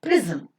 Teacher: Now between z and m, you don't find any vowel sound. The sound m itself, because of the inherent sonority property, is functioning as the vowel sound here, giving the structure of CCV and CV.